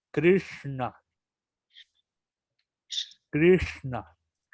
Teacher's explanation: la S se pega hacia el paladar, hacia atrás, como y la N se pronuncia igual como cerebral, na.